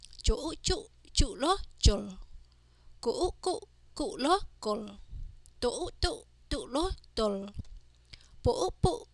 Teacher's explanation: Combining the second series consonant with the vowels o and ending with consonant lower. For the second series consonant, the vowels o change the sound to u.